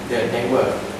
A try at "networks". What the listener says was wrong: The networks. Always pronounce the S at the end of the word. Network means only one network. But this is networks. Okay, if you speak to me network, you have only one network.